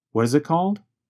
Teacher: What is becomes reduced to what is. The letter T in what changes to a sound closer to the letter D. And the word it goes by so fast that it becomes very reduced to just a vowel sound plus a very fast held T.